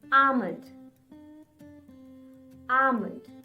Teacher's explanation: Drop the L sound and then try to say it.